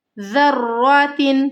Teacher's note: ذا کو را کے ساتھ ملانا ہے، مضبوطی کے ساتھ، سختی کے ساتھ۔